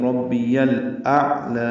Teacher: گے، تو ربی یل، لام ساکن ہے اس پہ اظہار ہوگا، حمزہ کو اقصی حلق سے ادا کریں گے، عین سے ملائیں گے، عین وسط حلق سے ادا کریں گے ، ربی یل اعلی، عین پر اظہار ہے اور لام پر